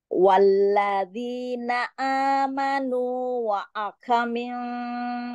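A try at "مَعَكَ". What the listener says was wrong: Ma'aka, ma'aka, apa Bunda? Ma'aka, ma'aka, bukan wa'aka.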